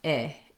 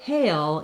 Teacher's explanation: So hail, you definitely have more length, and you move from a tense central A position to a more relaxed, lax I position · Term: diphthong